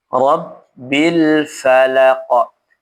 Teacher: Rnya dibaca tebal ya karena dia fathah.